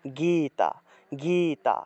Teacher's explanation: শ্রীমত ভগবত তারপরে গীতা এভাবে উচ্চারণ করতে হবে গ তে গেট একটু টান দিতে হবে কারণ দীর্ঘ ইকার আছে